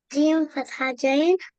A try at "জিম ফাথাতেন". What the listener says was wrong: ফাথাতাইন, জাইন না তাইন, জিম ফাথাতেন, জান।